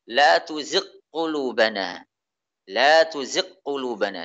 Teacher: Membaca dengan idgham. Idgham, masukkan ghain ini pada qaf. Memasukkan ghain pada suara qaf.